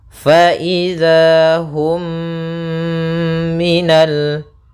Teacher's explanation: mimnya dimasukkan kepada suara huruf mim yang kedua mim matinya masuk kepada huruf mim kedua dan ditahan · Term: Idgham Mimi